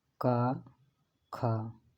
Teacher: का, खा ये अघोष होंगे